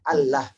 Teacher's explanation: Kedua, lafaz ini lamnya dibaca tebal. Tidak ada lam yang dibaca tebal dalam Quran manapun kecuali pada saat lafaz Allah.